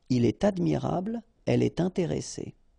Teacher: All right, so in all these cases, you should make the liaison, and in that case, it's with T